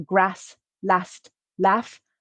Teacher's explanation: in my accent since i'm from the north of england i also use a for grass last laugh and many other words whereas other english accents would use long r this happens mainly